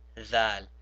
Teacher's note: when I said thal, I also put my tongue in between my teeth